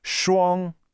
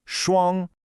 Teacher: It's a high, flat tone.